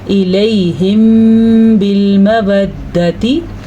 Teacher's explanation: میم ساکن کے بعد با آ جائے تو وہاں پہ اخفاء شفوی کا قاعدہ ہوتا ہے، قدرتی طور پہ وہاں پہ ہونٹ بند ہو جاتے ہیں اور غنے کی کیفیت پیدا ہو جاتی ہے